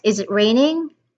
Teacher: It's a yes or no question. Then it means it is a rising intonation.